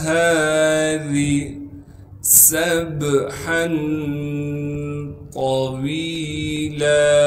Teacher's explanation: ہا کے بعد الف مدہ ہونے کی وجہ سے ہا کو ایک الف کے مقدار کھینچیں گے۔ را کے نیچے زیر ہونے کی وجہ سے را کو باریک کر کے پڑھیں گے